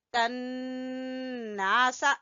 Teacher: नून मुशद्दद का गुन्ना अदा करेंगे और अलिफ को खींचेंगे